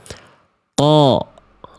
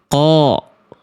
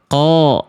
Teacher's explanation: ketika berharokat pangkal lidahnya tetap naik. Kenapa? Karena huruf qaf huruf tebal.